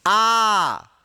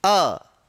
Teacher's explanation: आ में क्या कर रही, हमारी ध्वनि जो है वो काफी लंबी खिंचा गई, जबकि अ की ध्वनि हमने इतनी लंबी नहीं खींची थी।